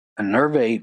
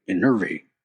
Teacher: Now, this word is not to be confused with one that kind of looks like it and sounds like it, but it's spelled I N E R V A T E. It's pronounced with stress on the second syllable.